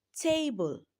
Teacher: In the word table, we have two syllables and the first one is stressed.